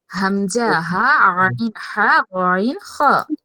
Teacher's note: অর্থাৎ হালক থেকে উচ্চারণ হয়, এই জন্য এই ৬টার নাম হয়েছে হরফে হালকি। কণ্ঠনালীতে উচ্চারিত হরফ।